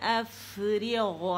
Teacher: اس میں رخاوہ ہے, اس رخاوے کو شو کریں گے کیونکہ یہ ساکن ہے